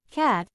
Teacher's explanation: This sound is the voiceless velar plosive. It is made by pressing the back of the tongue against the velum, creating a temporary blockage in the vocal tract. The sound is then released, producing a quick burst of air.